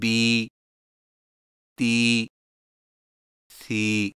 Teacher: یائے مدہ میں ہونٹوں کو نیچے کی طرف کھول کر تھوڑا سا کھینچ کر پڑھیں